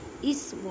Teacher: الف سے پہلے زبر ہے، الف مدہ کا قاعدہ کریں، بڑی مد ہے، 5 الف کی مقدار میں کھینچ کر پڑھیں. یا ساکن سے پہلے زیر ہے، یا مدہ کا قاعدہ کریں.